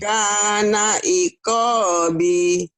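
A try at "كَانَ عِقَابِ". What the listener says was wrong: Kenapa panjang B-nya ya? Koknya panjang tetap. Nih, yang ini panjang tetap yang di garis bawahi ini. Kana iqabi.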